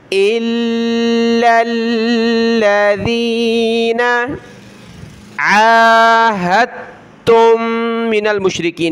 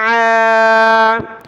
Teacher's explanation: عین کے اوپر کھڑا زبر ہے تو اس کو ایک الف کی لمٹ میں ہم کھینچیں گے اوپر۔ عین کھڑا زبر عا، ہا کو تا کے ساتھ ملائیں گے، تا کو دوسری میم کے ساتھ ملائیں گے، ناک میں آواز پیدا کریں گے۔